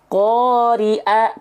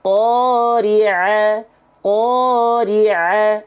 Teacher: pastikan keluar dari bagian tengah tenggorokan agar bunyinya menjadi ain, tidak menjadi huruf yang lain